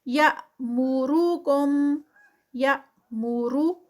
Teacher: یا پہ یہاں پر جرک لگے گا کیونکہ حمزہ جو ہے وہ سٹاپ پہ ہے